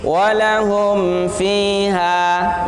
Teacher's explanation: mim di situ nggak boleh gunnah. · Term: izhar syafawi